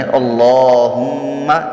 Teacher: اللہم، اس میں اللہ پر پڑھا جائے گا، میم مشدد پہ ایک الف غنہ ہوتا ہے